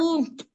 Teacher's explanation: Mim dia keluarnya dari kedua bibir yang dirapatkan disertai dengan gunnah.